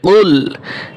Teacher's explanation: قل বড় কফ দিয়ে গলার ভিতরে একটু আওয়াজ করে কুল, যেন কুল যেন না হয়, কাফ দিয়ে যেন না হয়, বড় কফ দিয়ে যেন হয়।